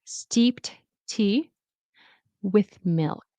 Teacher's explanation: So the ed turns into a t sound.